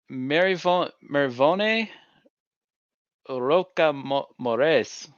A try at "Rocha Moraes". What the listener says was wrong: Rocha Moraes. Moraes. because it's phonetic, so you should pronounce all of those letters. There shouldn't be a silent A. It's like Morales without the L. Moraes.